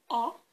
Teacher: the so-called rounded vowels just pronounce the vowel for example o you might notice that your lips are rounded and this makes the vowel rounded too